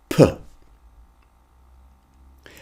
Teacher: with the P, you bring your lips together and then you pop them apart and blow some air